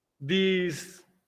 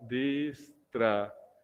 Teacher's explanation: hay un hiato de vocal abierta y vocal cerrada, y el acento está recayendo en la vocal cerrada. Entonces se le pone tilde.